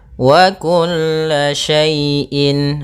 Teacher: Wa kulla syai'in, harus jelas dalam pelafalannya karena izhar itu artinya jelas, halq dari tenggorokan. Maka huruf hamzah itu keluar daripada tenggorokan, maka dinamakan dengan izhar halqi sehingga suara tanwinnya harus jelas